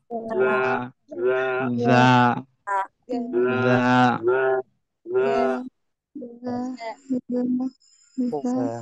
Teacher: জিব্বার আগাটা উপরে দাঁতে নিচে নিয়ে লাগাতে হবে।